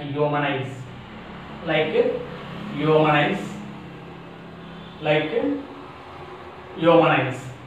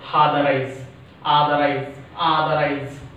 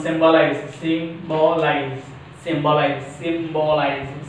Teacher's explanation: IZE. A word ends with IZE takes stress on a first syllable, third syllable from the end, like humanize.